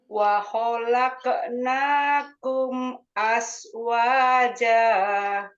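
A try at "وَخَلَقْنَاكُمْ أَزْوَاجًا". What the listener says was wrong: masih as ya, hati-hati, dilatih lagi az. Ya, ada az. Sedikit di bunyinya di bagian ujung agak ke tengah sedikit ya. Az. Bunyinya di situ.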